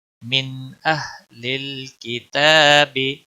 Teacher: نون ساکن ہے یہاں اظہار ہوگا یہاں پر اخفا نہیں ہوگا یعنی گنہ نہیں ہوگا. من نون کو ظاہر کر کے پڑھیں گے.